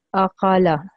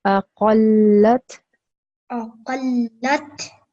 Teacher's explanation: the qaf and the lam need to be joined together, glued together. I need to hear a stressing sound when you join them. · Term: shadda